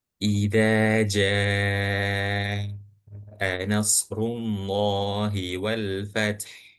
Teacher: jimnya itu dibaca panjang 4 atau 4 sampai 5 harakat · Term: mat wajib muttasil